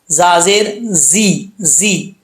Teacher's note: زا میں سیٹی ہے، سیٹی کے ساتھ پڑھیں گے